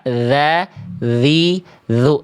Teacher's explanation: Jadi tsa dan dalal ini ee sama-sama makhrajnya, Teman-teman. Dari ujung lidah ke ujung gigi atas. Hah. Tapi yang beda dzal enggak pakai udara.